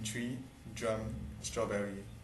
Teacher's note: The affrication of ch, j, and str in tree, drum, strawberry.